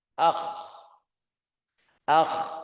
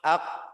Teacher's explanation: Huruf al-kha, akh, akh, suaranya mengalir. Huruf al-qaf, ak, suaranya tidak mengalir.